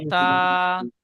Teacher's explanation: আলিফ মাদ্দার মতো একালিফ পরিমাণ টান দিয়ে পড়বো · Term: খাড়া জাবার